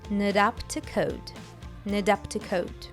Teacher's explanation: The T sound in not becomes a flap T, not up. and to is reduced to a t plus schwa sound, ta.